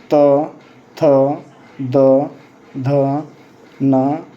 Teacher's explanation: ऐसे वर्ण जिसको बोलने में या उच्चारण करने में आपका जीभ दांत में सट जाता है उसे दंत वर्ण कहते हैं।